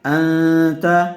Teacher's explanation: نون ساکن کے بعد حروف اخفا میں سے تا آیا ہوا ہے، اس لیے غننے کے ساتھ اخفا کر کے پڑھیں گے.